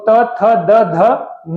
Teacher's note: दंत से जो बोले जाते हैं वो त थ द ध न बोले जाते हैं